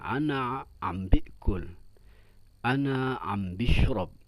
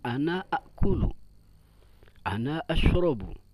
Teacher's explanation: Ada yang menambahkan huruf ba, ya, khususnya di negeri Syam. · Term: penambahan huruf